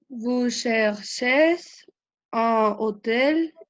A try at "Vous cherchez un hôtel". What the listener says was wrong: un hôtel. On fait la liaison, un hôtel.